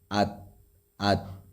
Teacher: دیکھیے تا جو ہے یہ حروف قلقلہ میں سے نہیں ہے، جس کی وجہ سے اس کو ہمیں ہلانا نہیں ہے۔ ات ات، تا باریک حرف بھی ہے اور قلقلہ بھی نہیں ہوگا